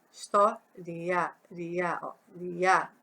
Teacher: O i é fraquinho e o a vai lá em cima. Então, como o i tá fraquinho e o a sobe, o sonzinho do a sobe, temos um ditongo crescente.